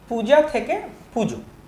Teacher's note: এখানে দীর্ঘ উকার প্রভাবে পরের যে স্বরধ্বনি আকার সেটা পরিবর্তন হয়ে ও স্বরধ্বনি হয়েছে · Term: স্বরসংগতি